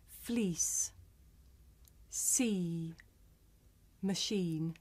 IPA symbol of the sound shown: iː